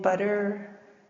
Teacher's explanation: a quick contact of the tongue with the alveolar ridge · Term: taps